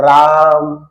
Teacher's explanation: रा जो आ है उसको आपको तीन बार के आ के बराबर खींचना पड़ेगा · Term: प्लुत स्वर